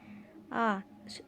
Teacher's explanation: এই স্বরধ্বনি উচ্চারণের সময় আমাদের ঠোঁট দুটি প্রসারিত বা কুঞ্চিত না হয়ে স্বাভাবিক অবস্থায় থাকে, তাকে মধ্যস্থ স্বরধ্বনি বলে।